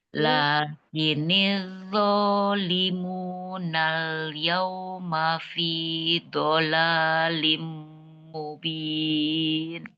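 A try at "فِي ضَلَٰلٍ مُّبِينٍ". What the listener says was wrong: Fi do itu hurufnya dhad bukan dola tapi do tebal dhalalim mubin. Sisi lidahnya ke geraham atas.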